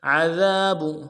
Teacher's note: ذال کے ساتھ الف مدہ ہے، ایک الف مقدار میں کھینچیں گے